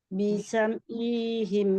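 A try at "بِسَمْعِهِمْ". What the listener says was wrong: মাদ দিচ্ছেন, আপনি আইনে মাদ দিচ্ছেন, এই হিম আইনে কোনো মাদ নাই, ই হিম বলতেছেন।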